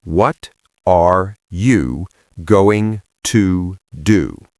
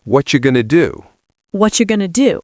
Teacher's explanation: The what are you becomes whatcha. Going to becomes gonna.